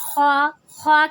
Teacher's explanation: خوا کی ادائیگی کیسے ہوگی؟ رگڑ کی آواز کے ساتھ ہوگی